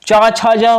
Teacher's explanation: तालु से उच्चारण होता है